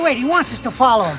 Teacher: These two words sound like one, wants us. There's also the omission of the H in him. · First, there's linking. These two words sound like one, wants us.